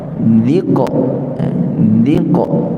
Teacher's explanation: di nipiskan dal, kemudian tebalkan qaf, qalqalah